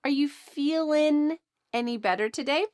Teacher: the G at the end of ing, feeling, is cut off